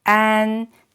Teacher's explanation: the first tone is flat keep it flat